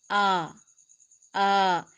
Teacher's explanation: منہ کے خالی حصے سے ادا ہوگا جس کو جوف دہن کہتے ہیں۔ یہاں سے 3 حروف ادا ہوتے ہیں اور تینوں حروف مدہ ہوتے ہیں جن کو مخرج کے اعتبار سے جوفیہ کہتے ہیں۔